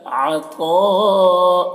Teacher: تو کو موٹا کر کے پڑھیں گے اور کھینچیں گے